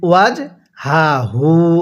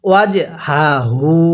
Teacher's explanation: দোনোটা হাই উচ্চারণের সময় গলার মধ্যে আওয়াজ করতে হবে